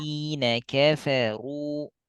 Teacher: Kafa tipis. Ru tebal.